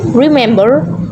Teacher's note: remember is a verb with three syllables but the stress comes on the second